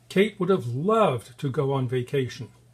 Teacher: we emphasize vacation because it's where she would like to go and we also emphasize love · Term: stress timed